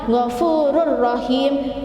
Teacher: tanwin bertemu dengan rok gofururohim Hai tulisannya gofururohim membacanya ngevoer Rohim jadi cepat dimasukkan tetapi tidak mendengung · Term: idgham bilagunnah, idgham bila gunnah